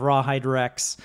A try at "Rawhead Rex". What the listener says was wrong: Rawhide Rex. You didn't say Rawhead. You said Rawhide.